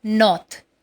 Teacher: Dear students, please mind it very carefully that in this R is silent. It is not pronounced as north, but it is north.